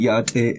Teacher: every syllable is high, so you have to maintain a high pitch throughout the word. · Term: high tone